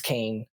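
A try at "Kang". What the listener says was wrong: i keep hearing you saying kane it sounds like you're saying kane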